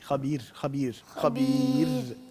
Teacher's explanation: یعنی آخری والی را جو ہے خبیر والی وہ باریک ہوگی